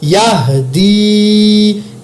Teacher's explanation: دال کے نیچے زیر آ گئی تو یہ یا مدہ ایک الف کے برابر لمبا کر کے پڑھا میں نے